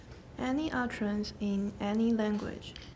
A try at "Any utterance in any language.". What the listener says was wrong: That sounded really American. Can you make it a bit more British? Remember the wedge? It's more like ah in British.